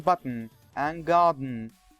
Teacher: The explosion of the stop takes place through the nose, and it's called nasal explosion. If you want to define the nasal explosion, we will say, nasal explosion is the release of the stop consonant by lowering the soft palate, causing the compressed air to burst out through the nose. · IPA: /bʌtn̩/